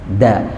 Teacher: kita harus harus berusaha untuk mempasakan ujung lidah kita ini nempel ke akar gigi seri atas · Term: huruf dal